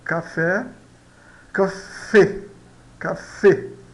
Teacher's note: esse e fechado não é tão fechado quanto o e fechado português, mas ele eh se aproxima do e fechado, tá? · Corresponde sempre ao e, a e fechada do português. Não existe e em espanhol, tá?